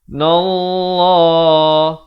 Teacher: di sini lafzul jalalah dibacakan dengan tebal 2 harakat